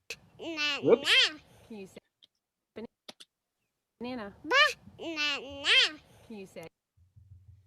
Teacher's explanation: it's three distinct syllables there's a break between each of them and a breath